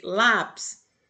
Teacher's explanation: Lápis O lá é mais forte.